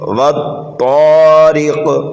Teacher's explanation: را کے نیچے زیر ہے، را کو باریک پڑھیں گے اور جلدی پڑھیں گے · واو کو ہم طا میں ملائیں گے اور دوسرے طا کو الف مدہ کی وجہ سے 1 الف کے برابر کھینچ کر کے پڑھیں گے، اور یہ طا جو ہے حروف مستعلیہ میں سے ہے، اس کو موٹا کر کے پڑھیں گے۔